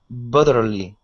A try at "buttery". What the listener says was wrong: Now instead of an L sound at the end, it's an R, so it's buttery. So what you're saying is butterly, and you're pronouncing an L at the end, saying butterly.